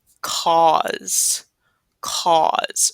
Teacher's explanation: we have the AU sound in the middle and then that weird Z kind of sound